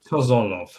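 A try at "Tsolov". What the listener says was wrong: Solov. Solov. yeah, silent T exactly. Like I have to pronounce it. So Solov, just that.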